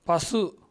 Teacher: தனிக்குறில் எழுத்தை அடுத்து வல்லின உகரங்களில் ஒரு மாத்திரை அளவுக்கு முழுமையாக ஒலிக்கும். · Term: முற்றியலுகரம்